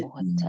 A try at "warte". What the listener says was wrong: It's not a wart. Because you look at the WART and your American mind immediately says, oh, that's wart. but why are we not gonna say worte in this case?